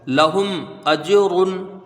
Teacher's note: हमजा को जीम से जब मिलाएंगे तो यहां पर कलकला होगा क्योंकि जीम साकि साकिन है